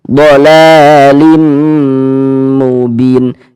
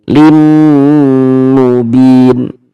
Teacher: kita tahan sejenak suara kita gunahkan kira-kira sepanjang dua harakat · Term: dighunahkan atau didengungkan